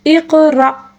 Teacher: اور حمزہ کے اوپر جو ساکن ہے اس کو جھٹکے کے ساتھ پڑھیں گے